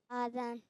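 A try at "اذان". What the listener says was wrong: अब आजान कर दिया इन्होंने। नहीं भाई, आजान गलत है। जो वो मद लगाते हैं वो गलत लगाते हैं। आजान दुरुस्त नहीं है, अजान दुरुस्त है।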